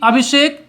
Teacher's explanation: यानी दंत स का मूर्धन्य श में बदलना